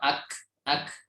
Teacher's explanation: Huruf kaf itu lebih ke bawah, artinya agak maju sedikit, dan juga pertemuannya ke bagian atas itu tidak sekuat huruf qaf.